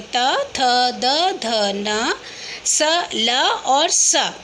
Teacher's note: ऐसे वर्ण जिनका उच्चारण करते समय जीभ का अग्रभाग दंत का स्पर्श करता है दंत्य वर्ण कहलाते हैं